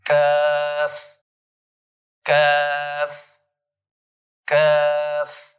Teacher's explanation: اس میں یہ صفت پائی جاتی ہے کہ جب قاف کو ادا کیا جاتا ہے تو زبان کی جڑ تالو کی طرف بلند ہوتی ہے. لیکن کاف یہ موٹا نہیں ہوتا، یہ باریک پڑھا جاتا ہے.